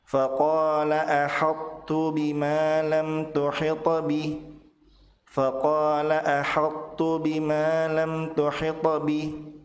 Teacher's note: Huruf ta dibaca tebal tanpa dipantulkan, kemudian langsung masuk ke huruf ta. · Sifat yang tersisa dari huruf ta adalah tebal. Maka pada kata ahattu dibaca tebal tanpa dipantulkan. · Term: idgham naqis